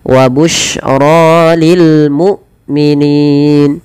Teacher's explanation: Hamzah tidak boleh diseret, dan dia harus dijelaskan suara bunyinya, penahanan daripada suaranya dan penahanan dari nafasnya